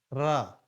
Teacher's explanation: जीव तालू से लुढ़क कर स्पर्श करती है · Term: लुंठित